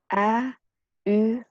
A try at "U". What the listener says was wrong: Not A. If you have difficulty to pronounce U, you may start from E. E. Like E. The sound is at the front of your face, not at the back, at the front. E. And from E, you keep the same position with the tongue, and you just move your lips to make a round.